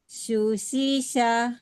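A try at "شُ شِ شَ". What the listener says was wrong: Nah, di sini masih terdengar kecil ya, tapi di sini shu. Jadi sebetulnya bukan kecil ya, kurang menyebar, Bu. Lebih menyebar lagi shu, shi, sha.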